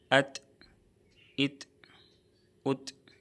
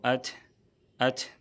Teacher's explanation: یاد رہے کہ یہ جنبش کی آواز تھ میں نہ بدل جائے، کیونکہ بہت سے لوگ جب ادا کرتے ہیں تو اتھ اتھ پڑھ دیتے ہیں، یہ بالکل صحیح نہیں ہے، اس سے بچنا چاہیے۔